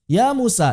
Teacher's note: Ya dua harokat, mu dua harokat, sa dua harokat.